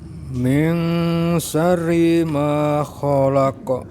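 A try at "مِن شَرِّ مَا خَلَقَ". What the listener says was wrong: Ditahan agak panjang Pak roknya. Min syarri ma khalaq.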